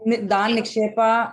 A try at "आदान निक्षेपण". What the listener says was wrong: दान निक्षेपण नहीं है, लेकिन वो आदान है।